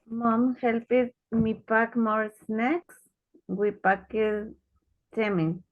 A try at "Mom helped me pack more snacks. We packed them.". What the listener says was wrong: Helped, no, helped, helped. Y este no sería packet, sino que packed, packed, all right? Mom helped me pack more snacks and we packed them in, okay?